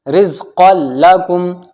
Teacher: تنوین کے بعد لام آ گیا، ادغام لام یعنی بغیر غنہ کے ادغام ہوگا